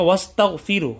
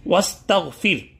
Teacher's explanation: اور اگر وقف کریں گے تو ہا کی پیش کو ساکن سے تبدیل کر دیں گے، سکون سے تبدیل کر دیں گے.